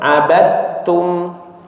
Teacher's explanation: jadi huruf dalnya 100% berubah jadi ta ya. Jadi abadtum seperti ta yang bertasydid ya. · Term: idgham kamil